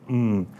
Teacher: it's a nasal M so it's vibrating constantly and the Vedas tell us that it should be pronounced audibly